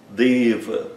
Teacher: O E fechado, longo, e o A curto, fechado.